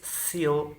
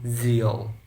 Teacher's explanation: the difference between s, voiceless, and z, voiced